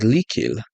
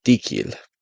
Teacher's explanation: This would be anticipatory distance, and it would essentially say that anytime a lateral is followed by another lateral, or an L is followed by another L, the first L becomes a D. So the word likil becomes dikil. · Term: lateral dissimilation